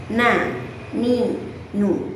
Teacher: Kali ini kita akan masuk kepada huruf nun, di mana huruf nun keluar melalui ujung lidah mengenai gusi gigi seri atas